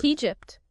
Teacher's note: A common issue for Portuguese speakers is starting with an a sound, but it's e.